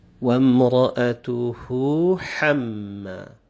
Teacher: First, there are two letters together. One is the ha, the small H sound, and then the ha, the coarse or the heavy H sound, and they come together here. So a person may have the tendency of mispronouncing them since they come together.